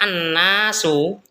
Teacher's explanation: kata annasu tadi juga dibaca gunah karena nunnya adalah tasdid